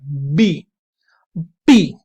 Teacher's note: तो जब आप लिप्स के माध्यम से रोकते हैं तो आप आप इस तरह के जो कॉन्सोनेंट साउंड्स होती हैं उनको बेसिकली बोलते हैं आप बायलेबियल। बायलेबियल मतलब जब आप दोनों लिप्स के माध्यम से रोक रहे हैं